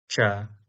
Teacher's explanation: This is palatal sound. It's unvoiced and unaspirated. It's represented in IAST by ca and this sound is quite prevalent in English like in words change, challenge, chapter, chart, church, etc.